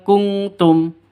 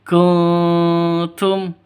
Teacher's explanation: samar didengungkan siap-siap ke huruf tnya · non mati bertemu dengan ta, samar didengungkan, siap-siap ke huruf ta-nya. Kalau yang ini ditambah ng, kalau yang ini tidak usah.